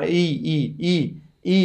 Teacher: भनेको त्यो स्थानमा गएर, जस्तै अको उच्चारण गर्दा घाँटीमा गएर ठोक्दैन। ईको उच्चारण गर्दा ई गर्दाखेरि तालुमा माथि गएर छुन पर्ने, तर जिब्रोले छुँदैन।